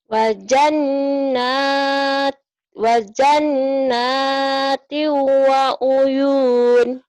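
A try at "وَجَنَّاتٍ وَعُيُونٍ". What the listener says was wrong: Wanya pendek. Nih, kalau Bu Arum gini. Wajannati wanya pendek.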